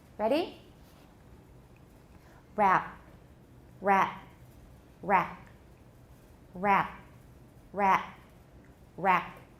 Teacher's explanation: we often don't hear that final consonant clearly